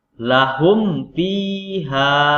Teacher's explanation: Dibaca terang atau jelas dengan mulut tertutup. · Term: izhar safawi